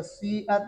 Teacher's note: سیئت میں سین اصل میں مضموم ہے، سین پر ضمہ ہے، تو اس کی وجہ سے جو ہے نا کیا نام ہے یعنی اس اصل جو اس کا ضمہ ہے اس کی طرف اشارہ کرتے ہوئے ہونٹوں کو گول کرتے ہیں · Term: اشمام